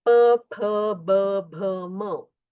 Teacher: और जो प वर्ग है प फ ब भ म, ये ओष्ठ वर्ण है, मतलब ओठ को ओठ का स्पर्श होता है